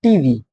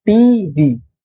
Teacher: Both are stress syllables here.